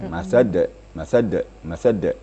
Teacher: jadi ada tekanan kemudian mantul gitu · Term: qalqala kubra